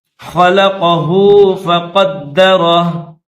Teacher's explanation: قاف کو دال کے ساتھ ملائیں گے اور دال مشدد ہے تو اس کو سختی کے ساتھ پڑھیں گے